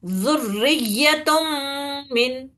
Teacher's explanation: تو یہ پوری طریقے سے مل جاتا، اور میم کو جو ہے ہم شدت سختی سے 2 مرتبہ پڑھ لیتے اور غنہ کرتے اس کے اوپر